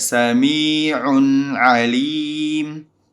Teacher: sami'un ketika diwasal maka dia ada bunyi nun sakinah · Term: tanwin